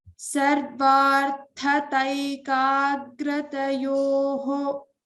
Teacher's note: the visarga is coming before the ksha. We have to pronounce the complete visarga here.